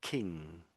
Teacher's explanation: You not use the tip of your tongue but with the ng sound. It has to be the back of the tongue and that the further back you can do it, the clearer the sound is. I would suggest um if you're doing it with the front of your tongue touching the roof of your mouth, you end up just getting kin king.